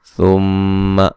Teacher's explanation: ثم میم مشدد پہ غنہ ضروری ہے